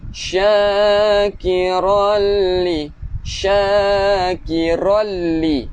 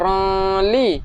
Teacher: cara bacaan idgham bila gunnah ni dia memasukkan tanpa dengung